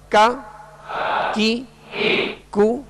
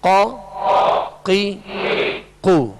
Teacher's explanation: فرق یہ ہے کہ کاف کو جو ڈنڈی والا کاف ہوتا ہے اس کو باریک پڑھیں گے، اور قاف جو دو نقطے والا ہے اس کو پر پڑھیں گے، موٹا پڑھیں گے